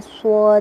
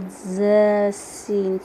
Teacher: स्वाद में मोटी सीटी है, सीन और ज़ा में बारीक सीटी है।